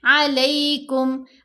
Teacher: लाम के ऊपर ज़बर साथ या साकिन, या लीन बन गई